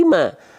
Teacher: mim dilafalkan ketika fathah bukan mo kan, tapi ma. Nah, maka dia huruf yang tipis